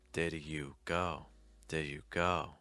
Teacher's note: Though it is a held sound, I'm still allowing the breath to flow a little bit onto the next word. I'm just not releasing the breath on the D.